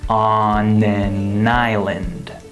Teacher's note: The final N of the word on links to the A of the word an, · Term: linking